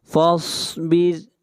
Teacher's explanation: یہاں پر صاد کو موٹا پڑھا جائے گا، صاد حروف مستعلیہ میں سے ہے